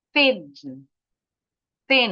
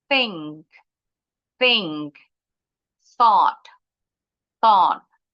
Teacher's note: Let's start with the voiceless TH atau unvoiced sama. Ujung lidahnya keluar, tapi pita suara kita nggak bergetar.